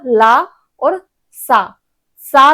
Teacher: ला और सा जब बोलोगे सरोता वाला सा है तो आपका जिह्वा आपके दांत को टच करना चाहिए।